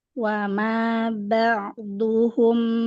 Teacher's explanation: Ba enak dia ba ainnya tawasut. Harusnya yang agak manjang itu ain.